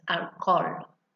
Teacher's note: So notice in Spanish, although it's the same word, alcohol, because we don't pronounce the H in Spanish, so it's instead of alcohol, it's alcohol.